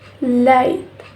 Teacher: when the air flow to the sides of the tongue and this sound is voiced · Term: lateral approximate